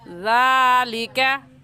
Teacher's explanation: زبان کی نوک کو دونوں دانتوں کے درمیان میں لانے سے زال نکلتا ہے، تو نرمی سے پڑھیں گے۔ · زال کے اوپر کھڑی زبر ہے جس کو ایک الف کی مقدار کھینچتے ہیں، تو اسے کھینچ کر اور نرمی سے پڑھیں گے ذالکہ۔